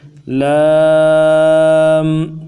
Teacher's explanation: پہلے اس لام کو بغیر زبر زیر پیش کے پڑھیں گے۔ لام، تین الف کی مقدار میں کھینچیں گے، آخر میں غنہ نہیں ہوگا